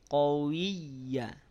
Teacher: yang ditekan huruf y-nya bukan wya bukan qwi tapi qowiya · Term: bertasdid